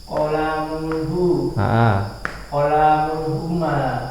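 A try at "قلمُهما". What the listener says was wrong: Enggak pakai tanwin. Qalamuhuma gitu.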